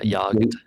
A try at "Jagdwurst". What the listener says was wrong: You said jagged worst.